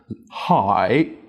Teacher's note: Ideally, you should start with a breathy high and a creaky low.